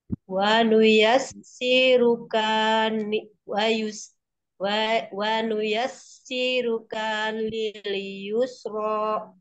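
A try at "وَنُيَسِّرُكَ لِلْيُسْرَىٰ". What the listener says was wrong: Kaknya satu bunda, jangan kak. Wanuyassiruka lil yusro. Si dua panjang bunda. Kenapa sirlukan? Kak aja.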